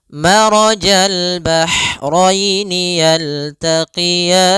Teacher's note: ro-nya tebal disebabkan dia ro yang berharakat fathah